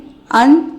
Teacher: अन एक अनुस्वार है जिसकी ध्वनि नाक के द्वारा निकलती है। आहा एक विसर्ग है।